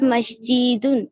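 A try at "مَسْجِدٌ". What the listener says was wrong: হ্যাঁ, কোনো টান হবে না, হ্যাঁ। হাযা মাসজিদুন, এটি একটি মসজিদ।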